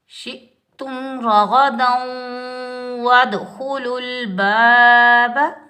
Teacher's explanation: شین کی آواز پھیلتی ہوئی محسوس ہوتی ہے